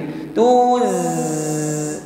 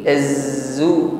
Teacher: Sautun zaid yakhruju bi quwwah, ada suara tambahan, maksudnya desis yang keluar dengan kuat dari ujung lidah dan gigi seri bawah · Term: shafir